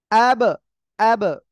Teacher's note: অ্যাব, অ্যাব, বা, দুই ঠোঁট থেকে উচ্চারণ হয়। তাহলে কি, যখন উচ্চারণ হবে তখন কে দুই ঠোঁট জোরে একটার সাথে আরেকটা বাড়ি খাচ্ছে, ঠিক আছে, তখন ওই আরেকটা আওয়াজ হচ্ছে অ্যাব। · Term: কলকলা